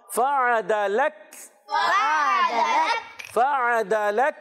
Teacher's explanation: عین کو حلق کے درمیان والے حصے سے, عین کو تھوڑا زور دیں گے اور حلق کے درمیان